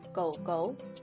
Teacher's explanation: notice that while the first goal is still in the third tone the second goal is now in the second tone